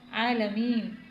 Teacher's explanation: رب العالمین، عین حروف حلقی میں سے ہے، کھڑی حرکت کو ایک الف کے برابر ہم کھینچتے ہیں، یعنی ایک حرکت کے برابر کھینچ کر پڑھتے ہیں، تو عالمین، یائی مدہ آ گیا، یا ساکن سے پہلے زیر ہے تو یہاں پہ بھی ایک حرکت کے برابر ہم کھینچ کر پڑھیں گے۔